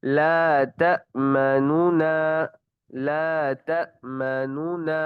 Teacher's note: اب اس کے اندر دو نون پڑھیں گے، لیکن جو پہلے نون کی پیش ہے نا اس کو تھوڑا مخفی آواز میں پڑھیں گے، ہلکی آواز میں پڑھیں گے کہ قریب والا سن سکے، یا پھر اس سے مخفی آواز سے پڑھیں گے جو دوسرا ہم نے پڑھنا ہے۔